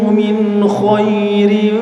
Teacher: suara Nun atau tanwinnya dibaca jelas tanpa di tahan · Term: izhar halq